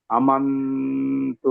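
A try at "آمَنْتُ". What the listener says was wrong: আমান্তু আতে টান হবে আরো।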